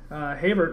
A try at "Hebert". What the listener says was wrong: Not even close. No, not even Hebert. It's H is silent, E is like an A.